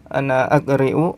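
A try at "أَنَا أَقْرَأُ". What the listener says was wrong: Ana aqra'u, kan qara'a yaqra'u ya. Ra-nya fathah semua.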